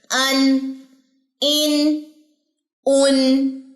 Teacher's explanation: अन, इन, उन, ठीक है। अन के लिए जबर के लिए मुंह खोले अन, जेर के लिए होंठ पीछे की तरफ लेके जाए इन, पेश के लिए होंठ गोल करे उन। अब नून पे आते हुए होंठ पीछे आ जाएंगे, सिर्फ अलिफ की पेश पे होंठ गोल होंगे उन, ठीक है।